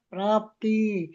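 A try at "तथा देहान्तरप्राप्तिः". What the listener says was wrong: ವಿಸರ್ಗ ಬಿಟ್ರಿ ಮಾತಾಜಿ ವಿಸರ್ಗ ಬಿಟ್ರಿ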